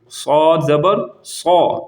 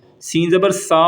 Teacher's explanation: یہ سین نہیں ہے، سین زبر سا ہوتا ہے، لیکن یہ صاد ہے، اس کو موٹا پڑھیں گے